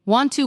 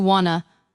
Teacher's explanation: Want to quietly blends into something closer to wanna.